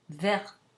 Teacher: It's just verte with a tiny bit of release of aspiration because the T is in final position.